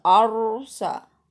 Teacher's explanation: Ini roknya rok tafhim ya, tebal.